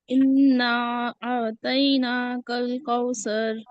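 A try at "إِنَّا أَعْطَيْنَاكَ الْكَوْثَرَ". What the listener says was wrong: देखिए कौसर में सा की याद आएगी नहीं हुई आपकी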